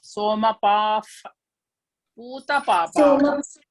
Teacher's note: Because when there is visarga and the visarga in front of that, there is pakara. You should replace visarga by af, something like af.